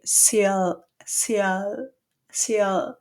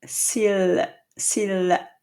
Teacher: usually in English you tend to have the L a little bit more in the back · in French the L is really right behind the teeth like this